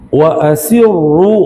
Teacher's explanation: Wa asirru ru tebal ya. Wa as si nipis wa asirru. Bila kita masuk huruf ra baru tebal dengan baca asirru jadi huruf sad.